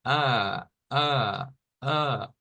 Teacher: A esta se le conoce como eh, la A, que es una A entreabierta, se le llama a esta que está acá, esta A de acá. Es decir, la lengua no va hacia el frente, sino que va un poco más atrás y la boca no se abre tanto.